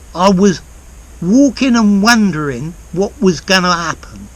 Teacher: Words that end ing lose the G